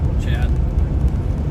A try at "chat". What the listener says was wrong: Well, that sounds like Chad.